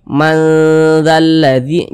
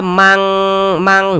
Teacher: maka cara membacanya itu disamarkan kemudian juga didengungkan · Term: ikhfa Hakiki ausat